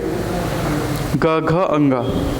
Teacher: ग घ अंग में जब उच्चारण करेंगे तो यहाँ पे आपको थोड़ा सा एक वाइब्रेशन फील होगा, लेकिन क ख में उतना नहीं होता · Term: सघोष व्यंजन